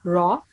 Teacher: when Ra has a fatha, we read it with thick sound, bit rounded lips.